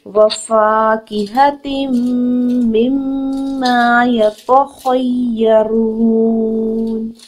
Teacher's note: میم مشدد، اس کو فوراً next word میں ملا کر مرچ کرتے ہوئے غنہ ادا کرتے ہوئے پروڈیوس کریں گے. میم مشدد نیکسٹ میں پھر میم مشدد ہے، یہاں پر بھی غنہ کریں گے اور میم زبر الف ما ہے. · واو کی حرکت کو نہیں کھینچنا، فا زبر الف فا ہے، 2 حرکت کھینچ کے ادا کریں گے. کاف کے نیچے 1 حرکت ہے، اس کو نہیں کھینچیں گے.